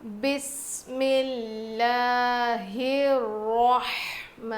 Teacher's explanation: ہا کو رو سے ملائیں گے اور رو کو موٹا پڑھیں گے